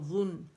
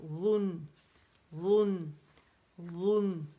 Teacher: ٹھیک ہے, وہ سین ہے, اس میں وسلنگ ساؤنڈ ہے, اس میں وسلنگ ساؤنڈ نہیں ہے. ٹھیک ہے, ذن باریک ہے, غن نہیں کریں گے